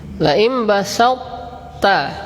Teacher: Nah, masih tersisa itbaq di huruf ta. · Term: idgham naqis